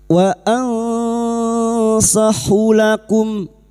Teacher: Ikfa hakiki. Kita samarkan bunyi nun sukun dan mendengung selama tiga harakat.